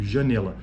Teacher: a vogal nasal aqui no caso a nasalidade é bem percebida neste nesse exemplo janela